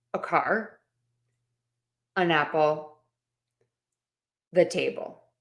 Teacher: All of those articles, a, an, or the, we connect it to the noun and we make the vowel sound an So a car, an apple, the table. I'm using that schwa sound. I'm making that vowel have less weight, a little quicker, a little more relaxed. And then the noun gets the most weight because it's the more important word here.